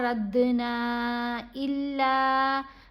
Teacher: और रद्दना इल्ला, यहाँ दोनों के ऊपर, नून के ऊपर भी और लाम के ऊपर भी ये मद है। इस मद को मद्दे मुनफसिल कहते हैं। 3 अलिफ की मिकदार जितना इसको हमने लंबा पढ़ना है।